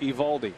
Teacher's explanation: But you don't hear the O in his name. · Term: silent letters